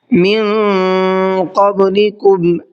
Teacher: من کے اندر اخفا کا قاعدہ ہے، اس لیے تھوڑا سا آواز کو ناک میں روک کر کے اور گھما کر کے پڑھیں گے۔ قبلکم کے اندر بڑا قاف ہے، تو بڑے قاف کا بھی خیال کر کے پڑھنا ہے۔